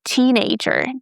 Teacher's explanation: Guys, we stress teen.